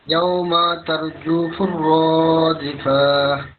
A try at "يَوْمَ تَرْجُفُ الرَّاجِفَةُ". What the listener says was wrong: একটু আবার ইয়াউমা এখানে টান হয়ে গেল। ইয়াউমা আবার বলেন তো ধীরে সুস্থে, তাড়াহুড়া নেই, তাড়াহুড়া করলে ভুল হবে।